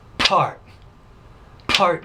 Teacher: That tells you that's a bilabial consonant. It's an explosive bilabial consonant, which means there's quite a bit of air that comes out of the mouth.